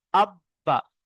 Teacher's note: তাসদিদ আছে বার উপর, বাটাকে দুবার পড়তে হচ্ছে। হামজা বা জাবার আব, একবার ডান দিকের অক্ষরের সঙ্গে মিলিয়ে, আর দ্বিতীয়বার সেই অক্ষরটি।